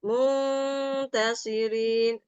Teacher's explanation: Mungnya lama dikit lagi. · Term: dengung